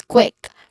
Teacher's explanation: Now again, if we try to say the word, the letter Q, it would sound like KW. It would sound like the blended sound of two consonants KW.